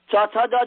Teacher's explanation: जिह्वा का मध्य तालु को पूर्ण रूप से स्पर्श करता है